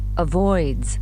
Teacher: avoids D voice sound so جت بعدها S نطق Z